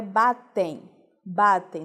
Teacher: a palavra também é terminada com M. Só que o som não é de M, o som é de I. Temos então um encontro vocálico foneticamente.